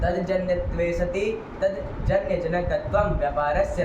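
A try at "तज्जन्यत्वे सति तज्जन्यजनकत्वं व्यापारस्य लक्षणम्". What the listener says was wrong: देखो बाबू, आप तद बोल रहे हैं ना, तद जन्यत्वे सति। हम बोल रहे हैं तज्जन्यत्वे सति। संधि नहीं होगी, तद आगे जन्य है, कोई सूत्र नहीं लगेगा।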